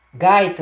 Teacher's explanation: Com essa combinação. Aí na primeira sílaba, o encontro da vogal A com a semivogal I. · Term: ditongo decrescente